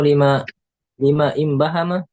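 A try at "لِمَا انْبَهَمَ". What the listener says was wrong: Liman, langsung masuk liman, kan hamzah wasal.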